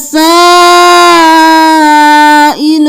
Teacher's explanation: 5 الف کے برابر کھینچنا ہے